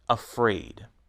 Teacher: In afraid, the second syllable is stressed.